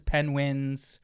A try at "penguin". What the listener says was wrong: Penguin. Penguin. You're breaking into syllables, dude. Like, come on.